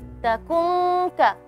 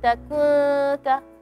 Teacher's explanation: Nun mati, kalau setelahnya ada harfal kaf atau qaf, suara dengungnya keras.